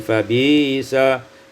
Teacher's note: ibdalul hamzati ya'an, ditukar hamzah ya menjadi fabisa